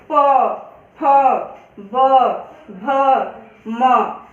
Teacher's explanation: जब हम प वर्ग के वर्णों का उच्चारण करते हैं तो हमारे दोनों जो ओठ हैं वो एक दूसरे को छूते हैं। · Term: ओष्ठ